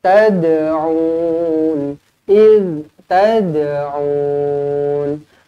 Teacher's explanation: Kemudian tad, lantunkan qalqalah sughra. Tad'un, iz tad'un, aw yanfa'unakum aw yadurrun, aw yanfa'u.